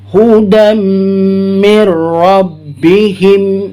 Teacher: Nah, perhatikan ada mim, tanda mim ini kalau disebut dengan tajwidnya idgham mimi ya. Idgham mimi. Jadi dengungnya panjang 2 harokat.